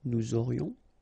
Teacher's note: final S not pronounced, and then you get this liaison